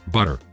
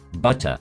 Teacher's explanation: British English is characterized by a hard T sound, as opposed to the American tendency to pronounce the T as an alveolar tap